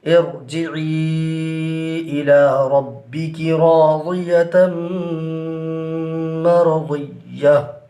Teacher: یہاں پر را کو پر کریں گے · یا مدہ کے بعد حمزہ دوسرے کلمہ میں ہے تو یہاں پر مد منفصل ہوگا، لہٰذا اس کو کھینچ کر پڑھیں گے۔ اور یہاں پر تنوین کے بعد حروف یرملون میں سے میم ہے، یہاں پر ادغام ہوگا، اور ادغام کی صورت میں غنہ بھی ہوگا، یعنی ادغام مع الغنہ ہوگا۔